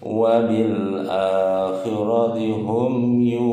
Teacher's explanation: mim mati ketemu selain ba dan mim, hukum bacaannya izhar safawi, mimnya dibaca jelas